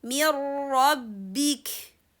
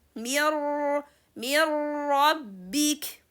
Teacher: Noon sukun is inserted completely with the letter ra. So as a result for that, there's no haraka for letter noon because we are not going to read it. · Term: complete insertion